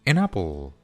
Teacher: An termina con la consonante N y apple empieza con la vocal A. Entonces simplemente las unimos.